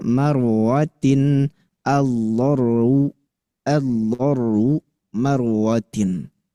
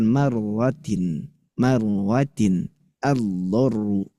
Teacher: Tapi ingat tuh, akhfi takriron idza tushaddadu. Ro itu gak boleh getar banget, harus ikhfa getarnya.